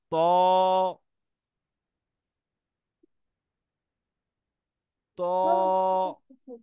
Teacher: মোটা হরফ, দু ঠোঁট গোল করে উচ্চারণ করো